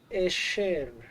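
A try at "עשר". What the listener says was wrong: a shin or a sin? Eser. And again, we have our rule of 2 segols, where the first segol will take the accent, and we have bum bum, eser.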